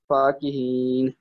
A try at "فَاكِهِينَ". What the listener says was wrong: نہیں، فا لمبی ہوتی.